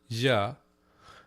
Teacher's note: it's a palatal fricative